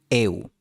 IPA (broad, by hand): ew